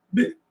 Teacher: o B é um fonema vibrante, ele é sonoro, ele é associado a uma sonoridade que vibra em toda a minha cavidade fônica, da boca, da garganta, da minha cabeça inteira, aquilo vibra.